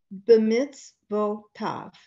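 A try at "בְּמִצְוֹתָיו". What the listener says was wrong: Good girl. Yes.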